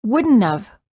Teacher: known about it instead of wouldn't have we say wouldn't have the T of the word not disappears